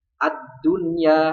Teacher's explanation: Kalau lamnya tidak dibaca jelas atau tidak dibaca ya langsung diidghamkan kepada huruf sesudahnya, itu disebut alif lam syamsiyah.